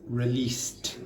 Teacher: Because that finishes in an unvoiced consonant, s, you pronounce that like t.